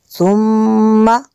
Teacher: میم شدد یہاں پہ غنہ کریں گے